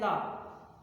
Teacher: उसी प्रकार जब हम ला का उच्चारण करते हैं रा का उच्चारण करते हैं तो क्या होता है, जैसे कहें ला, तो जो वायु होती है हमारे जीभ के दोनों बगल से ऐसे होकर गुजरती है, यानी पास से होकर निकलती है, दोनों जीभ के बगल से निकलती है, इसलिए इसको कहा जाएगा पार्श्विक व्यंजन।